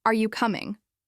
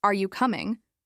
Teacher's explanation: Imagine hearing, Are you coming? flatly versus, Are you coming? with the rising tone.